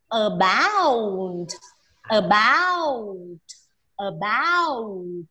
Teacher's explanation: Nó trọng âm, nó là âm thứ hai.